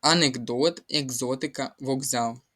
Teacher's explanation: глухий приголосний в українській мові, якщо стоїть перед дзвінким, стає дзвінким. Отже, у нас к перетворюється на звук ґ.